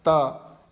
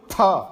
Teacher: त, ये इसको अल्प प्राण कहते हैं शिक्षा शास्त्र में, और उसी ता को दूसरे में बोलो थ, वो महाप्राण कहलाता है